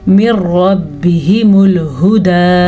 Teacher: नून साकिन के बाद रा आया है। जब ऐसा हो तो वहाँ पे गुन्ना भी नहीं होता और उसको खींच के भी नहीं पढ़ते और वहाँ पे रुकते किसी सूरत में नहीं है।